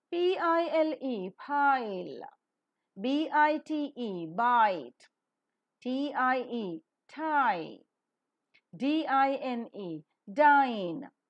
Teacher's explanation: The lips are neutral at first and later loosely spread while the glide is pronounced. The diphthong is rising, closing, and wide glide.